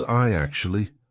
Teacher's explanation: when you've got I actually how are we going to link that what we're going to put in the middle is we're going to put a y sound